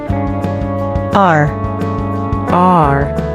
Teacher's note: Pour le dire autrement, afin de mieux prononcer la lettre R américaine, entre guillemets, la langue doit être légèrement relevée à l'arrière de la bouche, encore une fois, sans toucher le palais. Ainsi, vous obtenez un son résonnant et vibrant qui est produit en faisant vibrer les cordes vocales tout en maintenant la langue dans la position décrite précédemment.